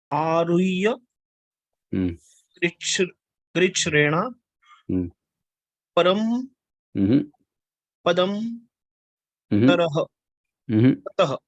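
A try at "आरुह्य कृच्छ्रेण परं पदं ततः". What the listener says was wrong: Aruhya Krichrena Param Padam Tataha. Parang, not param. Parang Parang Padam Tataha. Aruhya Krishrena Parang Padam Tataha.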